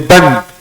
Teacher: Bagaimana kita mengucapkan tanwin dengan fathah? Pakai suara nun.